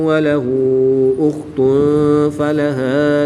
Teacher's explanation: دو پیش کی تنوین کے بعد فا حروف اخفا میں سے ہے تو یہاں پر اخفا ہوگا یعنی غنہ زمانی کر کے پڑھیں گے